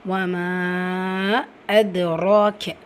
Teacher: மத்தை தொடர்ந்து அடுத்த வார்த்தையோட தொடக்கத்தில் ஹம்சா இருக்குது. மத்துல் முன்ஃபசில். 4 ஹரக்கத்தளவு நீட்டம் கொடுத்து ஓதுங்க.